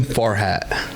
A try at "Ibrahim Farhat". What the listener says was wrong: you're Mexican, you should know how to roll your R's.